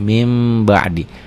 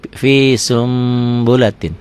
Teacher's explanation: Fi sun bulatin, sun n-nya berubah menjadi m